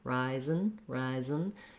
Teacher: from that z to a celeb again rising rising just means i move as quickly as i can from the z sound to the n sound